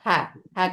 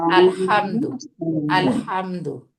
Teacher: Normal হা, এটা হা, হা করে ছেড়ে দেবো, আর এটা একটু চাপায় ধরবো, আইন হা। ঠিক আছে, আলহামদু, আলহামদু।